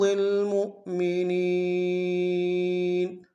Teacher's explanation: یہ حمزہ بشکل واو ہے، جھٹکا دیں گے، اور نون کو یا کے سامنے لائیں گے، یا مدہ ایک ہندار میں کھینچیں گے۔ · وحرض میں ہا کو گہرائی سے ادا کرتے ہیں